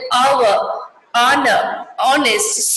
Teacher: Here we are, the H completely silent.